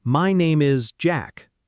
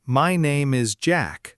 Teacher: we should say, My name is Jack, with a clear fall at the end